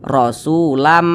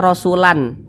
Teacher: Jadi bunyi tanwin ini dimasukkan ke huruf mim. Jadi dibaca rasulam, jangan dibaca rasulan, tapi langsung dimasukkan ke huruf mim. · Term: idgam bunah, idgham bi gunnah